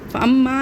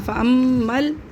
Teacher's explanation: आगे हमने चेक किया तो क्या था यहाँ पे साकिन था तो हम मीम को फ़ौरन लाम से मिला देंगे